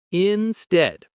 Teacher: Instead, stress on the second syllable.